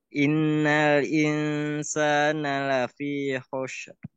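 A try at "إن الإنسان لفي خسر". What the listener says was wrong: Nah, ini huruf apa? Huruf sin. Bukan huruf sin, sasa. Nah, kalau Pak Abi menyebutkan nama saya Salman, maka menggunakan huruf sin, bukan menggunakan huruf shin. Jadi kalau dia shin berarti Shalman nanti ya. Shalman tidak, tapi Salman. Lafi khusr.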